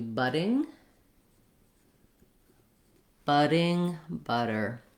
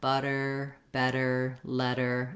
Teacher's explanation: how you say that d sound as a flap the tongue goes up lightly your voice is on don't make a strong d sound but lightly tap up and come back down